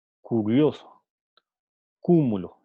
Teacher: el punto de articulación es la zona velar que está muy adentro